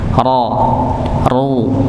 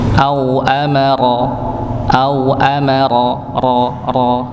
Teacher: ro fathah dhomah maka dibaca tebal